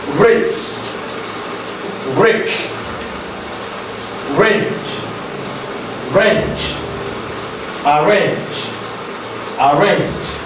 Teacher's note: To articulate this very sound, the tip of the tongue comes very near but does not actually touch our alveolar ridge. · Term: Ra sound